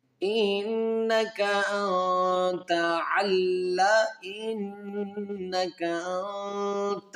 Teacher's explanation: ساکن کے بعد تا ہے تو یہاں پر اخفا مال غنہ کریں گے